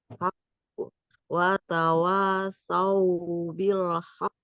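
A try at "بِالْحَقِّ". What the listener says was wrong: Ditekan dulu Bu. Iya, karena ada tasydid ya Bu ya. ditekan baru kita pantulkan ya.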